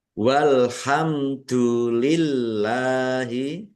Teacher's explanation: Bacaan izhar syafawi dibaca jelas. Allahnya dibaca tipis karena harakat di depannya kasrah. Lillahi lam fathah berdiri mad thobi'i panjang dua harakat. · Mim sukun bertemu dengan huruf dal bacaan idhar safawi dibaca jelas.